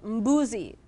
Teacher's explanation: you'll find sounds together that we don't use in English, like you would find mb at the beginning of a word.